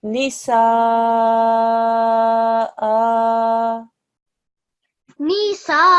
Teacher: The sa gets stretched for 4 to 6 seconds. This hamza with the vertical fatha for 2 seconds.